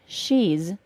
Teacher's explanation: I make a contraction of words the she is and create she's, the final s is pronounced as a z sound.